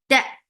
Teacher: Ta, for fatha open jaws, and make ta very sharp. Sharp means there is no flow of sound at all.